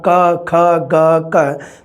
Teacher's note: ਕੰਠੀ ਧੁਨੀਆਂ ਜਦੋਂ ਜੀਭ ਦਾ ਪਿਛਲਾ ਹਿੱਸਾ ਜ਼ਿਆਦਾ ਕੰਮ ਕਰੇ, ਜੀਭ ਦਾ ਪਿਛਲਾ ਹਿੱਸਾ ਕ ਖ ਗ ਕ, ਤੁਸੀਂ ਦੇਖੋ ਬੋਲ ਕੇ ਤਾਂ ਜੀਭ ਦਾ ਪਿਛਲਾ ਹਿੱਸਾ ਪਿਛਲੇ ਤਾਲੂਆਂ ਨੂੰ ਟੱਚ ਕਰ ਰਿਹਾ, ਤਾਂ ਇਹ ਟੱਚ ਕਰ ਰਿਹਾ, ਇਸ ਦਾ ਮਤਲਬ ਉਸ ਨੂੰ ਕੰਠੀ ਜਾਂ ਕੋਮਲ ਤਾਲਵੀ।